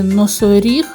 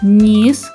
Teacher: у слові носоріг ми першим чуємо твердий звук н а у слові ніс ми першим чуємо м'який звук нь